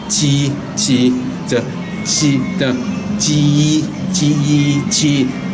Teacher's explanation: And then of course on the Ji, the first one is tip of your tongue, and then the blade of your tongue is touching hard palate. And then between hard palate and the tongue, you create a gap there, let the air come out.